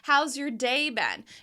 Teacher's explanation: We are contracting that how and has together